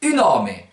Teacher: Devant voyelle, ça va donner une nome. Et vous pouvez faire claquer le N.